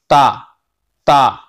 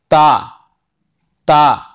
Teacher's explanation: सिरा जबान, जबान का अगला हिस्सा जो है सिरा है, ऊपर के सामने वाले दांतों की जड़ से लगा दो, है ना, और फिर ता अदा करो, ता ता।